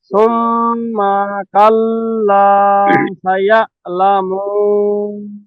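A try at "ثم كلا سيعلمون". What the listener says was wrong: একটু আছে যেখানে জবরদের টান কম বেশি হয়ে যাচ্ছে, ঠিক হয়ে যাবে।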